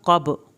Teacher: क़ाफ को पुर करें, बा का कलकला करना है